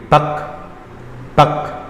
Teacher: kaf yang mati misalkannya di huruf bak, misalnya ba kemudian kaf itu jadi bak keluar sedikit hawanya, bak bukan bak, bukan bak gitu.